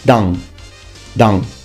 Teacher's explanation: Field here's an interesting one now notice that the pronunciation is the n needs to be completely and fully nasalized